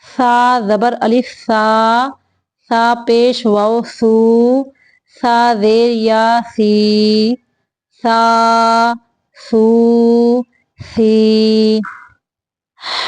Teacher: سا کو سیٹی سے نہیں پڑھنا